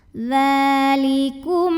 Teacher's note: maka mim sukun dibunyikan dengan jelas M, tidak perlu ditahan. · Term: izhar syafawi